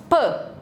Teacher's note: não tem vibração de prega vocal na produção desse som · vai produzir o som bilabial né a gente tem o toque ali dos dois lábios ela é oclusivo a gente tem ao clusivol plosiva também que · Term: bilabial desvozeado